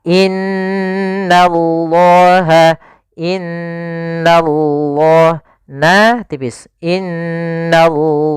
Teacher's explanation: karena di sini nanya tipis dia berharakat fathah, tidak boleh baca nallah, nanti nanya tebal, tapi dia innallaha, innallah, na tipis, innallaha la.